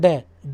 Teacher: ठीक है, जीभ के ऊपरला भाग जो होता है ना मूर्धा, उससे जब टकराती है जीभ और एकदम नीचे आती है बोलने में, जब आप बोलेंगे ड बोलेंगे तो जीभ ऊपर जाएगी, टकराएगी, है ना, मूर्धा से, और एकदम नीचे आएगी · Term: उच्चिप्त वर्ण